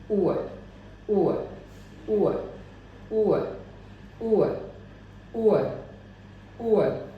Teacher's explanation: मेरे लिप थोड़े से आगे की ओर आ रहे हैं, राउंड हो रहे हैं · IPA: /ʊə/